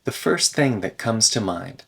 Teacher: the T in first thing gets deleted